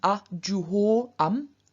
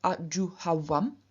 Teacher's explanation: o, which is originally au, appears as av in front of vowels